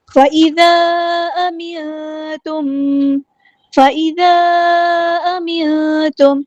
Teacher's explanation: یہاں پہ ہمیں مد دکھ رہی ہے، ہم نے اس کو 4 یا 5 کاؤنٹ لمبا کرنا ہے، مد منفصل ڈسکنیکٹڈ مد ہے ، نون ساکن کے بعد کو ہم یہاں پہ چھپا دیں · میم ساکن پہ اظہار شفوی ہو رہا ہے، ٹائم نہیں دینا